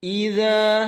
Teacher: tekanan hamzah jelas, kemudian zal lembut sekali 2 harakat